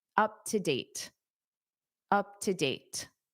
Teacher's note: because date ends the sentence and you naturally take a pause anyway, you can pronounce that T.